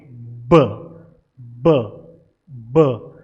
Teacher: और इसी तरीके से अगर मैं इसकी बात करता हूं, ये ब साउंड की, ब ब ब, तो आप क्या कर रहे हैं, आप एयर को ब्लॉक कर रहे हैं, होल्ड कर रहे हैं, और फिर उसे रिलीज कर रहे हैं, और फिर एक ऑडिबल प्लोजन आपको सुनाई पड़ता है। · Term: प्लोसिव्स